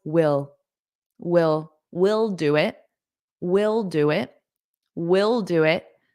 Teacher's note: native speakers in spoken English pronounce the unstress version of we will the exact same way as will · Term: unstressed version